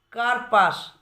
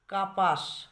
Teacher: কিন্তু র ব্যঞ্জন ধ্বনিটা ছিল, এখানে কিন্তু র লোপ পেয়েছে। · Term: মধ্য ব্যঞ্জন লোপ